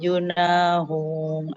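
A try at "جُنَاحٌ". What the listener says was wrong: junahun, bukan junahu, ada tanwinnya Bu. Junahun antakosuru, kol-kolahnya kof dipantulkan dari falaisa.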